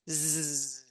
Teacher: So S and Z are basically the same. We're just adding our voice. Still, we're hissing, but I add my voice.